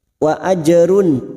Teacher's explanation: jim sukun qalqalah sugro yang mati asli di tengah kalimat kita pantulkan